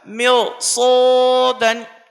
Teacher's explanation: طلبہ کو یہ بات کھٹکتی ہے تو ان کو یہ توجیہ بیان کی جائے کہ رائے ساکن سے پہلے زیر ہے لیکن اس کے بعد حروف مستعلیہ کے 7 حرفوں میں سے صاد بھی آئے، اس لیے اب زیر کا کوئی اعتبار نہیں ہوگا بلکہ صاد آنے کی وجہ سے رائے ساکن کو پر کر کے پڑھیں گے